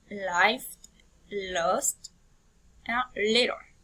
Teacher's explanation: L is alveolar. Because the blade or tip and blade of the tongue come in contact with the teeth